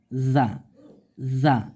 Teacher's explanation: জিহ্বার আগা সামনের নিচের দুই দাঁতের আগার সঙ্গে